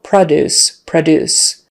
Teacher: we kind of use that schwa sound in the first syllable